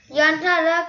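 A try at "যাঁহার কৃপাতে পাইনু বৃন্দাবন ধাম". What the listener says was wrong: we will not emphasize on na here, okay? We are not emphasizing. It's silent. Yahara Kripate Painu Vrindavan Dham. So in Bengali, if you see that this is called Chandrabindu. Ya, this is ya. The first word is ya. Chandrabindu. That the na will be silent here. The N.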